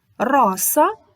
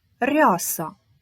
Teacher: відрізняється твердим і м'яким р